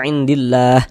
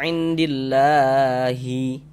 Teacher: Jangan dibaca indillahi baru berhenti, jangan. Huruf H kita sukunkan, kita matikan.